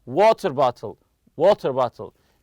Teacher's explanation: The stress goes on the first part of the compound noun.